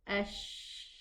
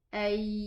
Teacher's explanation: And there was an airflow with the sheen. So the sheen has this whispering character, while the yeah has no airflow